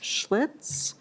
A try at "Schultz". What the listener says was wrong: Yeah, the I is before the L.